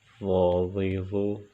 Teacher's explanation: ضا کو بھی موٹا کر کے پڑھیں گے کیونکہ ضا حروف مستعلیہ میں سے ہے اور حروف مستعلیہ کو پر پڑھا جاتا ہے۔